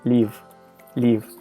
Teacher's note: a russian person with a strong accent would probably pronounce these two words the same way